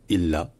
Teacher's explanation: illah, ça commence par un coup de glotte. Le L est long